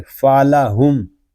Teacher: آگے حمزہ آ رہا ہے تو یہاں میم ساکن میں اظہار شفوی ہوگا، یعنی غنہ نہیں کریں گے۔